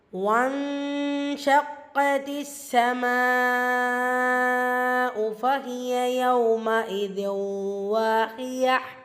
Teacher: நூன் சுக்குனுக்கு அப்புறமா ஷீன் இருக்கிறனால இஃபா பண்ணி ஓதுறோம். நூனை பாதியை மறைச்சி குன்னா செஞ்சு ஓதுறோம்.